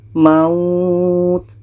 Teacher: Ini mad lain. Jadi ini kita panjangkan minimal 2 harkat baru matikan huruf yang terakhir.